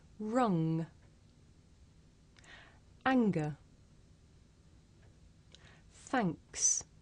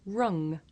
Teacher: we make this sound towards the back of the mouth and if you do this sound correctly you can feel a vibration in your nose